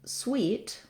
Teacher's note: So not only does it have an E vowel, but also it has a glide sound, the W sound, which we often spell with the letter W.